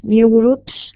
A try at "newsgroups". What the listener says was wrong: Remember, there are two S's. News groups,